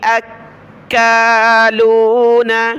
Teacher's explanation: سماعون للكذب اکالون حمزہ کو کاف کے ساتھ ملایا، کاف کے اوپر تشدید و سخت کیا اور کھڑا زبر کی وجہ سے اوپر کھینچا